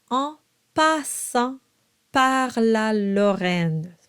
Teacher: The a on passant par la is a very bright ah sound. Often in English, the sound ah is a little darker.